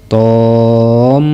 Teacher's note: membacanya huruf thnya dipanjangkan dulu kemudian ditasdidkan ke huruf Mim selanjutnya huruf mimnya dibaca gunah Sebab di tasdid jadi harus didengungkan